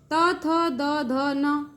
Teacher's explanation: त थ द ध न दंत से उच्चारण होने के कारण दंत वर्ण कहते हैं